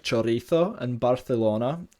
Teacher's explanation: something which we call the Theo this is a feature where C and Zeds are pronounced with the dental fricative · C and Zs are pronounced with the dental fricative, so in other words a th sound, like thought in English.